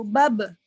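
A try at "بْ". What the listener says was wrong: Bab kan terbuka lagi Ustaz. Ya udah, contohnya enggak qalqalah. Ban. Bukannya itu ke khoisum, Ustaz. Bam ke hidung. Hidung mah bergetar atau?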